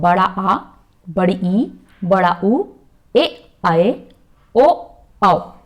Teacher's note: ऐसे स्वर जिनका उच्चारण करने में ह्रस्व स्वर से अधिक समय, लगभग 2 गुना समय लगे, वो कहलाते हैं दीर्घ स्वर